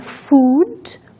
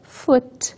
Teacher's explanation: a primeira é food, um pouco mais longa, enquanto a segunda é foot